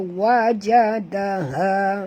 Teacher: Ha di sini dalam kerana dia tak sama dengan ha pedas ya.